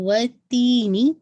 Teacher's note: تی کو آپ نے دیکھیے 2 کاؤنٹ اسٹریچ کرنا ہے کیونکہ یا مدیہ ہے نا، اور نون کی کسرہ شارپ رکھیے گا، نی، ٹھیک ہے، پورا آپ کو واضح ساؤنڈ کمپلیٹ ہونا چاہیے.